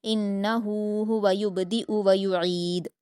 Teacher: یبدئ یہاں پر آپ دیکھیں با پر قلقلہ کریں گے اور یبدئ میں یہ حمزہ ہے یا کی شکل میں تو آپ کو حمزہ کو جلدی پڑھنا ہے، حرکت ہے اس پر اور حمزہ کی آواز نکالنی ہے، عین کی آواز نہیں نکالنی